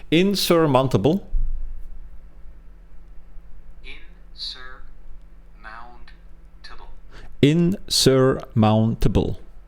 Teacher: The tricky part is stressing the second syllable. Sir, not the first.